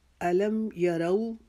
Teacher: یرو کو ہم نے واو کی دفعہ پورے ہونٹوں کو گول کرنا ہے